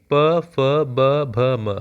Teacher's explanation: हमारे होठ टकरा रहे हैं आपस में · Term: ओट व्यंजन